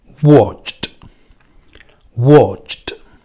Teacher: Bien, este verbo es watch, ¿vale? Como tiene sonido CH, al yo añadirle la ed, esa ed se va a pronunciar como si fuera una T, es decir, sería watched, watched, ¿vale?